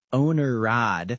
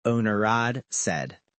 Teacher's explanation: It sounds like you're adding an R sound.